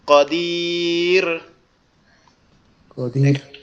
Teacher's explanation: এখন আমরা এখানে যদি থামি তাহলে কি হবে, কদির, কদির, এখানে রয়ে কোনো জবজ্জের পেশ হবে না, তাহলে রটাকে পাতলা করতে হবে